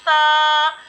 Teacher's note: जबान का सिरा और ऊपर के दांतों के अंदरूनी किनारे से सा और जाल अदा होता है, ठीक है।